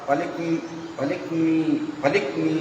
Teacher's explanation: नाक से बोलना है और इसका जो उच्चारण है ये हल्की कंपन लेकर के होना चाहिए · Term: यमों